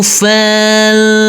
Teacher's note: Huruf fa di sini langsung masuk ke huruf lam yang bersukun. Huruf fa kita baca pendek, huruf alifnya kita anggap tidak ada.